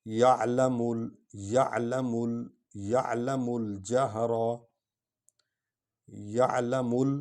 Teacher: میم اور لام کو اکٹھے پڑھیں گے کیونکہ لام پر جزم ہے۔